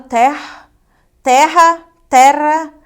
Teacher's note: esse r ele pode ser pronunciado como mais aspirado